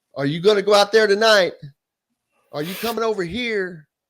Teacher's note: And I noticed where they lived in North Carolina area, they put the emphasis on the last syllable of the last word